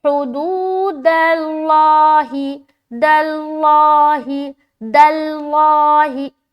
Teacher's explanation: دال بالکل میری پتلی ہے، باریک ہے، لام میں جیسے پہنچ رہے تو لام موٹا ہو رہا ہے